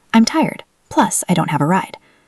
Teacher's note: Emphasize the word plus.